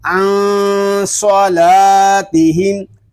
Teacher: عن صا لام الف زبر لا عن صلا تا زیر تی عن صلاتی ہا میم زیر ہم عن صلاتہم. صرف صاد کو پر کریں گے، باقی تمام حروف باریک پڑھے جائیں گے